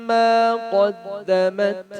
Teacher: قا کو موٹا کرنا ہے